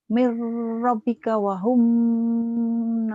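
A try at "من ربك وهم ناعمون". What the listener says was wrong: Wahumnya idhar. Jangan ditahan. Wahum. Wahum. Mir rabbika wahum naimun.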